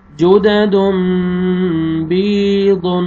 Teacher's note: یہاں پہ دیکھیں تنوین کے بعد با ہے، آپ نے تنوین کے نون کو میم میں چینج کرنا ہے، اور آگے یا مد ہے، یا جزم سے پہلے زیر، با کو آپ نے کھینچنا ہے